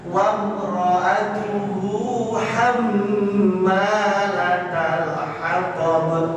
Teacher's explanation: Wa imra'atuhu, alifnya pendek, hu-nya yang panjang.